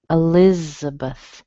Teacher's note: You can hear a schwa in the beginning. You hear a strong li, and then you hear two more weak sounds. So you don't really hear Beth, do you?